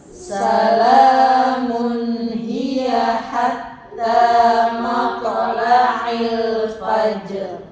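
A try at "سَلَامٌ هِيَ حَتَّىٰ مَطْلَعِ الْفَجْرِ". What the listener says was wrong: Ya, rohnya belum tebel tipisnya sih ya. Pokoknya kalau roh itu kan kalau huruf hidupnya tadi kan ada dua nih ya, fajr. Tadi kan yang sukun ada dua ya. Roh kita sukunin, jim kita sukunin.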